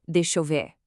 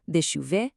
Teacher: the speed picks up, the vowels start to bleed together and the edges get kind of soft